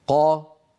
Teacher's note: كيف ان الصوت ينحبس خلف مخرج القاف وهو اقصى اللسان مع الحنك اللحمي ثم ينطلق الصوت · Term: قاف مجهوره فصيحه